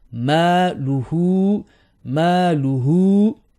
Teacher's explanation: ma and hu, same beat, same length.